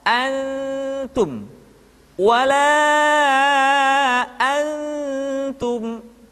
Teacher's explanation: tidak dibaca an Um tetapi posisi lidah sudah berada pada makhraj huruf ta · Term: ikhfa